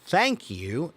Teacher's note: But if you say the word thank you is unvoiced TH. There's no buzzing, there's no humming sound.